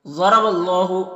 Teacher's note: ان اللہ یعلم وانتم لا تعلمون۔ ضرب اللہ، ضاد حروف مستعلیہ میں سے ہے تو پر پڑھیں گے، اور را کے اوپر زبر ہے تو را کو بھی پر پڑھیں گے